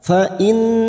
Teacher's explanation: mim sukun dibaca jelas tanpa mendengung namanya Idhar syafawi mim sukun mendengung hanya bertemu dengan dua huruf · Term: idhar safawi